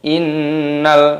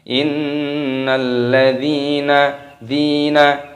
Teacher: Innalladzina amanu, perhatikan pada ayat yang ke-7 kita baca innalladzina amanu wa 'amilus solihati ulaika hum khairul bariyah. Terdapat nun tasdid di sini dimasukkan, diidghamkan, dimasukkan dan didengungkan karena gunnah berdengung.